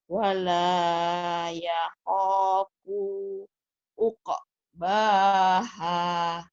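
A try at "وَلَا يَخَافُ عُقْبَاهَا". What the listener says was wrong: Oke, fu-nya pendek, Bu. Sekali lagi.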